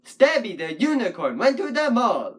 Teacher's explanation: That's about 10 syllables in that line, with the emphasis on sta, u, and mall.